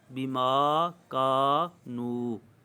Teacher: کا میں الف مدہ ہے، نو میں بھی واو مدہ ہے، حروف مدہ موجود ہیں، لہٰذا ان کو دراز کیا جائے گا